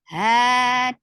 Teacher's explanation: ha 2 counts long, because this standing fatha is a complete alif. Ha, so this is 2 counts long, da short.